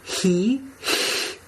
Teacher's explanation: the back of your tongue is getting very high at the back of your hard palate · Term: E tongue position